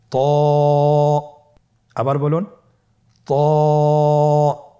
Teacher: জিহ্বার আগা, সামনের উপরের 2 দাঁতের গোড়ার সঙ্গে লাগিয়ে উচ্চারিত হয়।